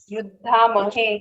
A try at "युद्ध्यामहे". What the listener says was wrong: युद्ध्यामहे, युद्धा नहीं, युद्ध्यामहे।